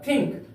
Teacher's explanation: यहां पर एन का प्रयोग अनुस्वार के तरह हुआ है इसलिए इसका उच्चारण होगा थिंक